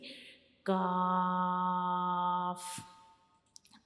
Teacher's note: हमारी सख्त वाला जो तालु होता है वो हमारी ज़बान के बहुत पीछे वाले हिस्से को टच करता है, तो काफ को हम अदा करते हैं